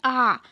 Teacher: যখন কেন্দ্রীয় স্বরধ্বনি উচ্চারণ করি তখন দেখুন আমাদের জিভ অনড় থাকে, অর্থাৎ একই জায়গায় টিকে থাকে। আমরা যখন বলছি আ, দেখুন একদম নিচে পড়ে গেছে, অর্থাৎ কোনো জায়গায় এগোবেও না পিছবেও না, একদম একই জায়গায় থাকবে।